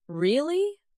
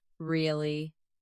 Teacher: Rising tone, curiosity. Really? Falling tone, confirmation.